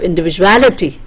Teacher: then you have individuality, the ality part is stressed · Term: primary stress